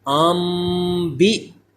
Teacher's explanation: حمزہ ساکنہ ہے تو جھٹکا لگائیں گے، ام بی، یعنی اب میم کی آواز آئے گی، ام بی ہم، ام بی ہم، ہا کا بھی مخرج سے ادا ہو۔